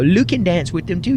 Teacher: she still uses the L sound in replacement of her Y's